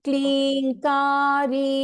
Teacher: It's kli dirgha, okay? Klinka dirgha. Ri is also dirgha